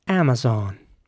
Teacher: of all is pronounced like an like an air Amazon and the O is quite round Amazon some British English will be more like Amazon and in